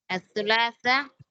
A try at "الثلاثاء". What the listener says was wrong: சுலாசாண்டா நீங்க கடைசி ஹம்சா சொல்லல. அஸ்ஸுலாசா. انا ثلاثة أربعة ரெண்டும் பிழை. ஏன் பிழை? முடிச்சல்ல பிழை. நீங்க துலாசா அண்டு அலிஃபோட நிறுத்திருக்கிறீங்க. ஹம்சா சொல்லல. அஸ்ஸுலாசா.